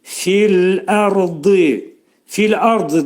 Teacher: Fil ərdi də burada fi'nin məxrəci yuxarı üst dişlə alt dodağın arasında olacaq. Ləmin məxrəcini saxlayırıq 2 saniyə miqdarında və yumuşaq, incə şəkildə deyirik.